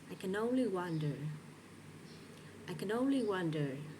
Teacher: Notice that the words only is stressed and wonder is stressed.